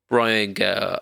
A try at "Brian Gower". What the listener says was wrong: Can you say his surname again? Because you didn't actually say her name. You just went, Gah.